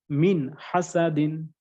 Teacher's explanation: মিম নুন জের মিন, একদম স্পষ্ট, ক্লিয়ার, কোনো গুণনা হবে না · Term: ইজহার